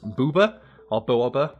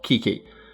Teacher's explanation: The first having, like, soft plosive sounds of, like, the b, the second one having, like, the hard consonants of the k. Near universally, people would say the soft round shape is booba, whereas like one with, like, sharp angles and stuff would be kiki.